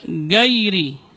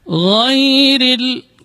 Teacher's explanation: Kemudian huruf gha juga sering di sini tidak boleh ada getaran karena gha keluarnya dari ujung tenggorokan. Adnal halq, dari ujung tenggorokan, dan dia bukan huruf tikrar. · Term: rakhawah